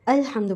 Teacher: حمزہ کے آواز کو ہم نے عین سے چینج نہیں کرنا. اکثر بچے پڑھتے ہیں الحمد، عل نہیں پڑھنا ہے، ہم نے الحمد پڑھنا ہے. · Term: حمزہ کی ساؤنڈ